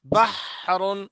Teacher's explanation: درمیان حلق سے رگڑ کھا کر نکلتی ہے ہا کی آواز